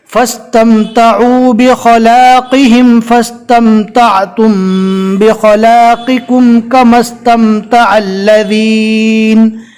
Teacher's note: فا کو سین سے ملانا ہے، بیچ میں الف کو چھوڑ دینا ہے۔